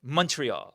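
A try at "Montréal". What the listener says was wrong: No, you don't have to be aggressive about it. It's just Mon, not Mon. And it's Montreal. Not Montreal. The stress is on the last syllable.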